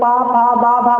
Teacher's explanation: फिर पा के सामने ओ है, तो पा मतलब पा वर्ग, तो पा का उच्चारण चले पा फा बा भा मा, ओठ चलता है